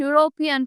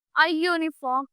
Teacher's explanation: यू जो है हमारा वॉवल तो है बट आवाज किसकी आ रही है वाई की आ रही है हमें एंड यूरोपियन फिर से वाई की साउंड आ रही है